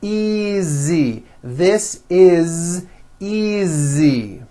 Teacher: Again, the S is like a voiced Z.